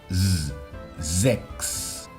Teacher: Las S a principio de palabra ante una vocal son S sonoras.